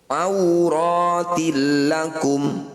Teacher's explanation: Disebut bacaan idgham bila gunnah. Idgham artinya masuk, kasrah tanwin masukkan pada lam.